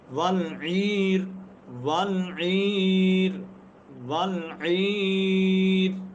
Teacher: را ساکن ہے، ما قبل یا ساکن ہے، ما قبل زیر ہے تو را بریک ہو رہی ہے.